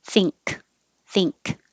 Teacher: the end is exactly the same position as 16 thing but you finish with a k so now you're releasing the k with air flow